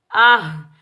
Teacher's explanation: इस हा को हम सीने की तरफ वाले हलक से अदा करेंगे।